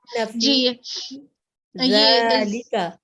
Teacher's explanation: فی یا مدیہ ہے، فا پہ کسرہ ہے اور یا ساکن ہے. اس کے بعد یہ 2 سیکنڈ لمبا کرنا ہے